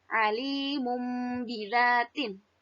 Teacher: si nunnya ini diganti menjadi mim, ya, dibacanya menjadi mim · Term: iklab